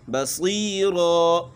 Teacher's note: صاد موٹا تو ہے لیکن یہاں اس کو اتنا موٹا نہیں کریں گے کہ بدنما لگے